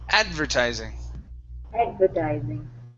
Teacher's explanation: advertising stress at the beginning